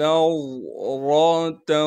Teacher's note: نون کو ضاد سے ملائیں گے اس لیے کہ ضاد ساکن ہے اور ضاد کو موٹا کر کے پڑھیں گے